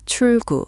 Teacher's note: So, it's not chul gu with a hard break. It's more like chul gu with the L flowing into the G.